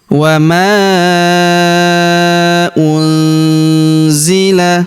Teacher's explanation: Wama unzila huruf nun sukun bertemu huruf zi maka nun sukunnya melebur ke huruf z kita baca dengung dan samar dengungnya kita tahan dua sampai 3 harakat